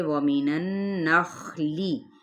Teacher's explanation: واو ہونٹوں کی نہ تمام گلائی کے ساتھ